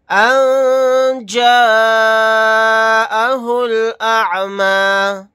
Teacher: یہاں پر نون ساکن کے بعد جیم ہے تو یہاں پر اخفا کا قاعدہ ہوگا